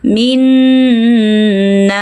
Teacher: Si sirin tetap kental. Meskipun ada huruf vokal di bawahnya, jangan ucapkan si, si. Angkat pangkal lidah Anda, minasirin. · Ah, rin-nya ada di sana. Panjangkan rin, panjangkan ri selama dua sampai enam harakat.